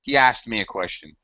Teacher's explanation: 3 consonants is a little difficult to handle. Many native speakers stretch the S sound and eliminate the T.